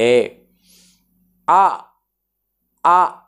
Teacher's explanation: ఎక్కడి నుంచి వస్తుంది అనే అంశాన్ని ఒకసారి మీరు గమనిస్తే అ ఆ అన్నప్పుడు పూర్తిగా నోరు తెరిచి ఈ కంఠం నుండి ధ్వని అలా బయటికి వెళ్తుంది . అదే నోరు అలా తెరిచి అలా ఉంచి ఈ పలకండి అంటే పలకలేము.